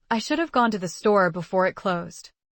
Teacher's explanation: The stressed words are gone, store, closed.